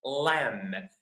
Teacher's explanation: We don't pronounce the B. Okay? So the B is silent.